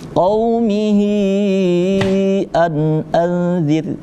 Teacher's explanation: Maka ketika hu dhamir, itu bertemu di depannya ada alif, maka harus dibaca mad sila tawilah, dibaca panjang, yaitu 4 sampai 5 harakat, dibaca panjang juga. Nah, maka kita bacanya agak panjang.